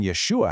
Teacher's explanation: ancient Greek didn't have a sh sound, so the sh in Yeshua had to go. And that's how you end up with the s sound in the Greek Iesus.